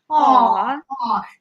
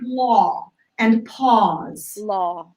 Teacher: it's still a straight line sound because it doesn't change from when you start it to when you end it. But the feeling of it is sort of like you're spiraling out. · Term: AW sound